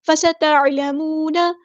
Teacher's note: سین کی سیٹی ہم نے واضح کرنی ہے، عین کو مستحرک یعنی میڈل تھروٹ سے ادا کرنا ہے. واو مد آ گیا تو مد اصلی کریں گے، نون کے زبر کو ہم لمبا نہیں کریں گے.